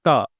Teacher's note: जीभ एकदम टकरा गई है और हवा को पूरी तरह से एक बार तो आपने बाधित कर दिया